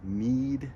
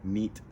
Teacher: And you can make a short iota by simply saying not need in English, but neat in English, because in English we tend to shorten vowels before unvoiced sounds like a T. So before voiced, need, that's a long iota, neat, that's a short iota. Now with those sounds, those are the anchor sounds, and by anchor sounds I mean need is in the very front of the mouth, and it is also at the very top of the mouth.